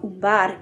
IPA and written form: umbar (Umbar)